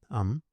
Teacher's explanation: Um is pronounced as a nasal sound similar to an M, Um, but without reopening the mouth